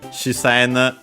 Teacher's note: actually the she should be barely heard if at all, because it's between a voice consonant.